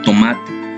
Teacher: La letra T representa un fonema oclusivo dental sordo de tomate.